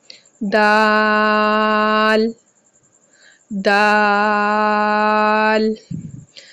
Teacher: जुबान की नोक ऊपर के दांतों की जड़ को लगे तो दाल का मखरिज अदा होगा